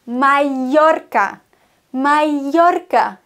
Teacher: Doppel-L wird im Spanischen wie ein J ausgesprochen.